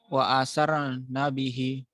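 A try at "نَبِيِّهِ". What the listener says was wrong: Nah, bihinya kurang panjang. Wa asar nabihi. itu adalah ya kecil.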